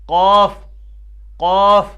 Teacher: زبان کے 3 حصے ہیں، زبان کی نوک، زبان کا بیچ یعنی درمیانی حصہ اور زبان کی جڑ. تو قاف ادا کرنے کے لیے ہمیں زبان کی جڑ جو ہے اس کو اوپر تالو کے ساتھ ٹکرانا ہے · قاف کا مخرج کیا ہے؟ زبان کی جڑ اور اوپر کا تالو.